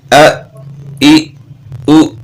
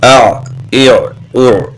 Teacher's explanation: حمزہ حلق سے بغیر رگڑ کھاتی آواز. عین حلق سے رگڑ کھاتی آواز.